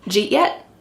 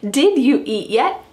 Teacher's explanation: we're dropping did and we're keeping j and then eat